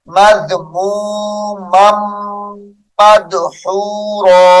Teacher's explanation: ادغام شفوی ہے، یہاں پر غنے کے ساتھ پڑھیں گے